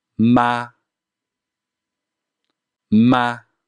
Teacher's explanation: the first tone is at the highest point of your vocal range whatever you're comfortable with so for me that is ma ma